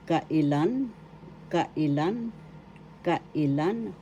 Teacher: First syllable ka, second syllable i, third syllable lan. The third syllable has the accent.